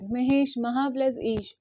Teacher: जैसे एक शब्द है महा प्लस ईश, आ प्लस ई, महा से आ की ध्वनि आ रही है, महा से आ की ध्वनि आ रही है और ई से ई की ध्वनि आ रही है, तो आ और ई मिलके बनेंगे ए